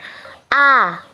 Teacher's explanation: atau suara Fatah nah vaname ini adalah satu-satunya vokal Tengah vokal Ini diucapkan Dimana posisi bagian tengah lidah agak merata dan mulut pun terbuka lebar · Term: suara fathah